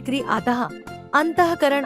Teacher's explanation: विसर्ग का उच्चारण कृ विसर्ग भी अनुस्वार की ही भांति स्वरों के बाद प्रयुक्त होते हैं। विसर्ग का उच्चारण आधे ह की तरह होता है।